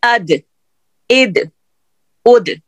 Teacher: زبان کی نوک اوپر والے 2 دانتوں کی جڑ سے لگے گی. 2 دانتوں کی جڑ پہ لگائیے ذرا دال.